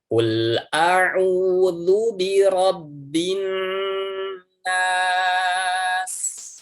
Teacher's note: ghunnah musyadadah ini ya dia pengucapannya adalah dua harokat sama dengan Mad Thobi'i